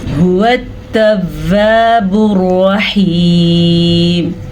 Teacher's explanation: ہا کو واضح کر کے پڑھنا ہے، ہا سینے میں سے نکلتا ہے، اس کو اگر اب ہا پڑھیں گے یا خو پڑھیں گے تو یہ ہا تو رہے گا ہی نہیں، لفظ ہی بدل جائے گا۔